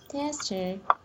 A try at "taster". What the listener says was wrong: Do you hear the difference when you are saying test and taste? Instead of saying test, because you are saying test.